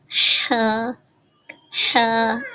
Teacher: حلق کے درمیان سے ادا کریں گے